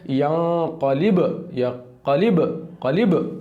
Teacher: با پہ جزم ہے تو قلقلہ ہونا چاہیے، لگنا چاہیے اور ہٹنا چاہیے